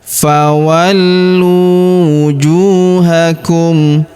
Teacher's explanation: Huruf ju kita panjangkan dua harakat karena wau sukun di depannya.